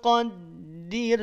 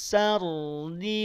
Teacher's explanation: Bedanya kalau yang pertama tipis, yang kedua tebal